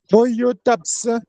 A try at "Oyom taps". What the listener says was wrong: Taps. Il faut prononcer le M là. C'est ça la marque du pluriel. Taps. Donc il faut dire taps. Oyom taps.